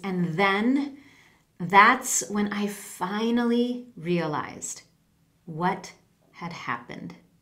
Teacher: happened now you'll also notice that my voice went down so I slowed down my speech I used some pauses and I used that falling intonation